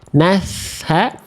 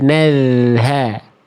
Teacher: Cuma yang satu pakai ada bocor nafas, nasha. Yang satu lagi ngalir suara aja, nalha.